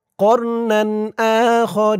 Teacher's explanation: এখানে অক্ফ করার কারণে জেরের পরে ইয়া সাকিন এক আলিফ টানটা 3 আলিফ টান হয়ে গেছে রি বলে 3 আলিফ টান দিয়ে এই নুনকে ধরা হয়েছে নুনের